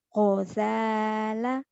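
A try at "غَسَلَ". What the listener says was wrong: Go, bukan ko ya. Kedengarannya go. Orang Jawa tuh go tuh ke ko.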